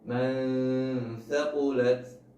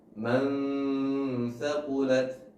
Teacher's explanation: Jadi perbedaannya adalah antara dimasukkan dan tidak dimasukkan. Hanya disamarkan saja, tidak dimasukkan ke huruf setelahnya. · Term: ikhfa